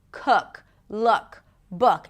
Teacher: So the jaw drops a bit, the tongue is a little lower, the lips round just a bit. Imagine like you have a hot potato inside your mouth.